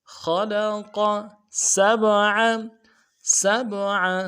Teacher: خلق سبع سین کو سیٹی باریک ہوگی، اور سین کو با کے ساتھ ملانا ہے، با جب جزم ہو تو قلقلہ ہوگا، قلقلہ کریں گے، عین کو موٹا ادا کریں.